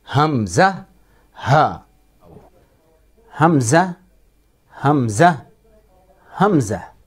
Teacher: حمزہ اور ہا یہ دونوں گلے کے آخری والے حصے سے نکلتے ہیں